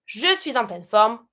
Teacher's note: Between suis and en, I do a little link.